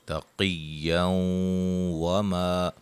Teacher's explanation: ادغام ہوگا مع الغنہ، گو کہ واو کے اوپر شد نہیں ہے، لیکن قاعدے کے مطابق آپ نے دیکھنا ہے کہ یہاں ادغام مع الغنہ ہوگا اور واو کے اوپر شد لگا کے اس کو پڑھیں گے